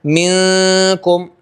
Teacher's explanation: نون ساکن کا اخفاء کہیں، ناک میں آواز گئی